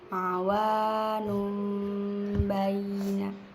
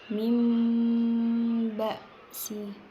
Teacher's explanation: Nunnya itu huruf nun matinya diubah ke mim dan dengan dengung. · Di sini ada nun mati bertemu ba, dan itu ada di atasnya ada mim kecil. Dan cara bacanya itu nunnya diubah ke mim. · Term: iqlab